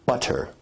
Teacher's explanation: in received pronunciation where you say butter, that involves a full T stop